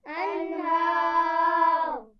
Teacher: انہار پہ جب ہم وقف کریں گے را پہ تو اس کو موٹا کریں گے